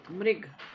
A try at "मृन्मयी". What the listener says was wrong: मृन न, नकार, मृन्मयी। नहीं, मृ न, उसके बाद न, नकार। हलंत न, मृ के बाद हलंत न, न तथा दधा न। हाँ हाँ, मृन्मयी।